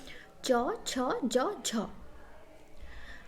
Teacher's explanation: मतलब स्पर्श भी करता है संघर्ष भी करता है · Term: स्पर्श संघर्षी ध्वनि